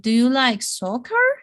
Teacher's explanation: rising intonation at the end of the word